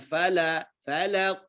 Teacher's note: Sering kesalahan terjadi falaq, lamnya dibaca tebal salah. Fa-nya tipis, lam tipis, qa tebal. Falaq. Qalqalah di sini ya.